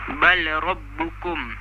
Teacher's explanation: Dia dibaca dengan idgham kamil, iaitu tanpa dengung, kecuali pada satah.